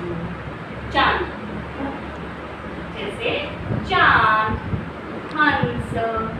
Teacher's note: अनुनासिक इसे इसलिए कहा जाता है क्योंकि नाक और मुंह से दोनों से इसका संबंध है, उच्चारण होता है, इसलिए इसे अनुनासिक कहते हैं।